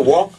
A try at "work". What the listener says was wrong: to work. Work. Work. Work. Pronounce the R. You sound like you say walking.